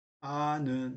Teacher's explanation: 리을 탈락은 어간에 있던 리을, 어간의 끝이 리을로 끝나고 있는데 그것이 뒤에 뭐가 오냐면 니은, 비읍, 오, 시가 왔을 경우에 어간에 있던 리을이 탈락하는 걸 리을 탈락이라고 합니다. 예를 들어서 알다에 는이 붙으면 아는 하고서 리을이 탈락합니다